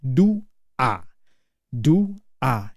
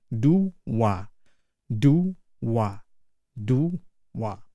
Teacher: Yes, we split this into syllable as do a do a. But we pronounce it as do wa like there is a w there. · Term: imaginary W